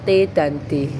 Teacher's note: lidah ketemu gusi. Ini disebut alveolar.